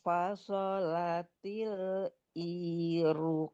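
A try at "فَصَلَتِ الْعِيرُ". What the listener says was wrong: Ainnya Bu, jangan tapi ai di tengah-tengah tenggorokan dilenturkan. Walamma fasalatil ain. Ah, itu orang yang sering membaca ain itu suka agak ngelantur ke amzah ya.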